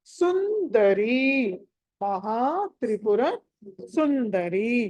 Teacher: సు తర్వాత అనుస్వారం ఉంది తర్వాత ద ఉంది కాబట్టి నకారం రావాలి